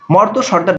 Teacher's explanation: এগুলোর ক্ষেত্রে রেফ এর পরে ব্যঞ্জন বর্ণের দুইবার উচ্চারণ করা যাবে না